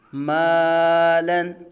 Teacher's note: الف سے پہلے میم باریک آ گیا، الف باریک پڑھا جائے گا اور لام کو بھی باریک پڑھیں گے